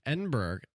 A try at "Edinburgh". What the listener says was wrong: Edinburgh? You pronounced a hard G on there.